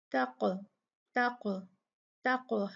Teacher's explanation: कॉफ जो है ये साकिना है, तो इसको भी हम कलकला से पढ़ेंगे